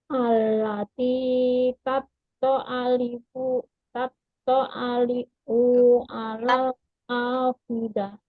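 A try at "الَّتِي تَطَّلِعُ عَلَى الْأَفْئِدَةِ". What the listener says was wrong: Tattali'u. Tattali'u. Ini ada ain Bu. Tattali'u 'alal. Ya, af'idah. I-nya dibaca jelas ya Bu ya. Idah gitu ya.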